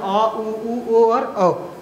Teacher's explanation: वे स्वर जिनका उच्चारण करते समय जीभ का पश्च भाग क्रियाशील रहता है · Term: पश्च स्वर